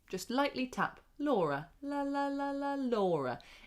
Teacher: That is a light L. And it happens before vowels.